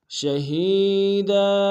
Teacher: دال کے اوپر تنوین غنہ کریں گے، وقت میں تنوین کو الف سے بدل دیں گے